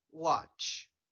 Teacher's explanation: focus on the last sound there is no vibration and that's because is a voiceless sound when we want to